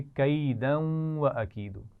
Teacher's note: تنوین سے جب واو کو ملائیں گے تو غنہ بھی کیا جائے گا. جیسے اگر ہم اس کو ملا کر پڑھیں گے تو کہیں گے کیدا و اکیدو، لیکن ابھی ہم نے یہاں پر وقف کیا ہے تو اس صورت میں غنہ نہیں کیا جائے گا.